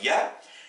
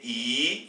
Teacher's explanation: si on la prononce comme une consonne ou comme un diphtongue, ça se prononcera ya. Mais si c'est une longue voyelle, c'est « i » selon sa position dans la phrase.